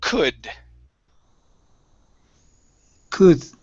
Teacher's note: the L is silent. We do not pronounce the L.